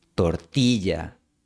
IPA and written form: toɾ'ti.ʝa (tortilla)